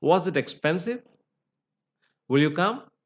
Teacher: then we have Rising tone that is an yes or no questions